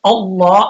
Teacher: حمزہ کے اوپر زبر ہے تو پھر لام کو موٹا پڑیں گے